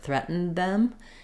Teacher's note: I might drop the D a little bit and make my N short, threatened them, or I can do a small d, threatened them.